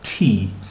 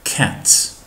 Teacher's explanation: mbas këtyre tre tingujve nuk do shqiptohen si në shqip, por do kemi një h të vogël në shqiptim e cila nuk i jepet nëpër fjalor.